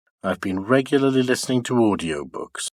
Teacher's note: for regularly and listening they are accented words and pronounced high in pitch and the following word two also keeps high in pitch in · it's a falling nuclear tone or rather a lowfall the lowfall is realized on the nucleus or and the following three syllables of audio books · syllable of regularly to the last syllable before the nucleus while for I've been they are de accented and pronounced low in Pitch